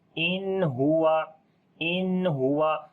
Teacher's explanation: نون ساکن کے بعد ہا گیا، اظہار حلقی ہوگا، نون کی آواز کو ظاہر کر کے پڑھیں گے